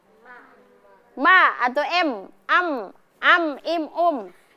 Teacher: mim itu termasuk huruf ghunah ya karena bunyinya ada di mana? Keluar dari rongga rongga hidung